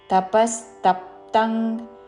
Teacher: అనుస్వారము క వర్గములోని అనునాసిక అంగ్ ఉచ్చారణ